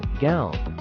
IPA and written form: ɡaʊn (gown)